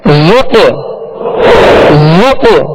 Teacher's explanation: اس میں قلقلہ ہوگا، آواز میں جنبش ہوگی اور آواز لوٹتی ہوئی آئے گی